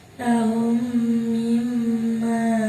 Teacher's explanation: Mithlain, huruf yang sama, hurufnya ada 1 mim. Artinya apabila ada mim mati bertemu dengan huruf mim, maka cara bacanya diidghamkan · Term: idgham mithlain